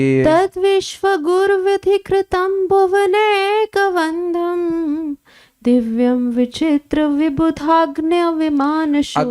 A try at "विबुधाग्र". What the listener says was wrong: अग्न्य नहीं है, विबुधाग्र, अग्र।